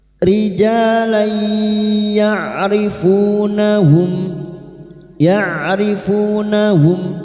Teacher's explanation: Nun sukun atau tanwin yang bertemu dengan 4 huruf ini termasuk huruf ya, ya, nun, mim, waw. Maka bunyi fathah tanwin masuk dengan mendengung, masuk pada huruf ya dan mendengung selama 3 harakat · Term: idgham bi gunnah